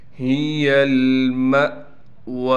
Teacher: ہا کے بعد یا ہونے کی وجہ سے ہا کو ایک الف کی مقدار کھینچیں گے۔ ہی المأوى، ہا کو صاف کر کے گلے سے نکالیں گے سینے کی طرف سے